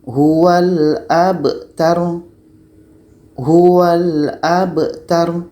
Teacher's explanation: Huwal abtar. Ro-nya mati, ta-nya pendek saja.